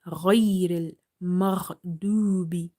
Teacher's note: Ghain is again from the musta'aliya heavy letters, so we will read it quite heavy, as well as ghain is from the upper throat. Okay, so it's halkiya also.